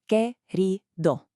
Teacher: You've got 3 distinct syllables there, with that beautiful, just slightly rolled R sound sitting right in the middle of the word.